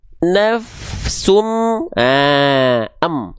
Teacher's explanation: Dia nggak dibaca nafsun lagi. Tapi an-nya di sini dimasukkan ke am. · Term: idgham